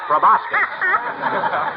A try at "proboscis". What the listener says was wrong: It's proboscis, my boy. The C is silent, like a husband in a millinery shop. It's from the Latin pro and the Greek boscain, to feed, and properly used refers to the trunk of an elephant.